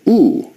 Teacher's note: oo is a high back rounded vowel.